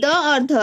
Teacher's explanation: द और ध ये दोनों दंत्य वर्ण हैं, इनका उच्चारण स्थान दंत है।